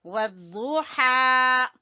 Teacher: تو اس کو ہم اس طرح پڑھیں گے، اعوذ باللہ من الشیطان الرجیم، بسم اللہ الرحمن الرحیم، سورۃ الضحیٰ، سورۃ الضحیٰ، والضحیٰ، ضاد کا مخرج، زبان کی کروٹ جب اوپر کی داڑوں سے لگے تو ضاد ادا ہوتا ہے۔ والضحیٰ، ہا کو ہم نکالیں گے وسط حلق سے